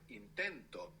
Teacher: When we put the O, the accent is just before it.